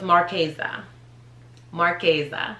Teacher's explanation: that s is pronounced as a z